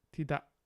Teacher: That K is a glottal stop, apparently.